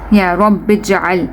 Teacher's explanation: Okay, so we need to stretch, we need to connect this ba with the jim, and jim is silent, so we need to do qalqala here